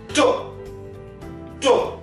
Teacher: This to is spoken with your tip of the tongue and alveolar ridge. People say this is two and this is two, but both have the same pronunciation.